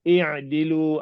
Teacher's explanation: ain kena sebut tu, masuk ke dalam ke belakang tekak tu. I'dilu, bukan jadi ain.